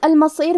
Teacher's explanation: کلمت المصیر میں حرف الصاد ہے. کیونکہ صاد حروف التفخیم میں سے ہے تو ہم یہ حرف کو بھاری آواز میں پڑھیں گے